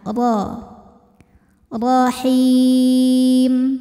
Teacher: Huruf ra dibunyikan secara tafkhim karena berbaris fathah, maka dibacanya tebal, pangkal lidah angkat